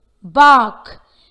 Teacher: When the letter R is followed by a consonant, its R sound is unheard.